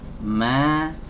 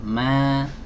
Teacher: Harokat fathah ini harus dibaca tipis teman-teman, ya.